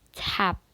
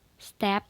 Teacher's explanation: t can be two allophones aspirated and not